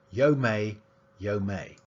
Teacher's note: he removed the alveolar but he didn't replace it with the glottal instead he did a zero realization